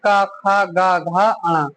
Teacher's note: और कंठ से होते हैं क, ख, ग, घ, ण। तो ये रहे आपके उच्चारण स्थान।